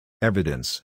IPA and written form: ˈevɪdəns (evidence)